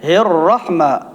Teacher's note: جس وقت را مشدد کو ادا کرتے ہیں تو تقریر پیدا ہوتی ہے، تقریر کو ختم کرتے ہیں تو را ادا ہی نہیں ہوتی۔